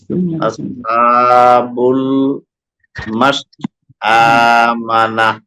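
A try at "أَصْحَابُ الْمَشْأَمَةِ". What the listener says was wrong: নুন নাই তো। না কোথায়? আবার পড়েন।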